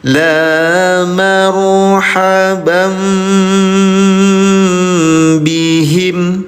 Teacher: Cara bacanya samar dengungkan tahan dua harakat dirubah jadi mim ya. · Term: Iqlab